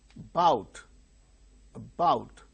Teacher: the initial syllable a is very weak about so because it is not stressed it becomes weak